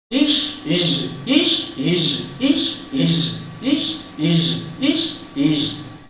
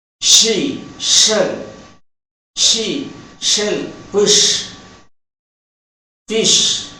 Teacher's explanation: When ish is produced, the vocal cords do not vibrate, but when is produced, the vocal cords vibrate.